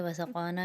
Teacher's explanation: نا کے اوپر الف مدہ بن رہا ہے، 1 الف کی مقدار کھینچیں گے۔ وسقانا میں قا کے اوپر 1 الف کی اور نا کے اوپر بھی 1 الف کی مقدار، کیونکہ دونوں جگہ پر الف مدہ بن رہا ہے۔